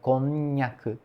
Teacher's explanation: a língua praticamente cola, né, no céu da boca quando fala, falamos konnyaku